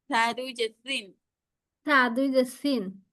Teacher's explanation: জিহ্বাটা একটু বের করবেন। বের করে হচ্ছে উপরে দুই দাঁতের আগার সাথে লাগাবেন, লাগিয়ে নরম ভাবে উচ্চারণ করবেন। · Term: সা উচ্চারণ